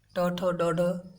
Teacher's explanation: इन सभी का जो उच्चारण होता है मूर्धा से होता है